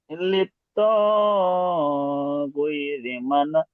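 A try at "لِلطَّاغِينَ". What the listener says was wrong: লি- গৈরি নয়, বানান করেন,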